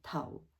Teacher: the fourth low falling tàuh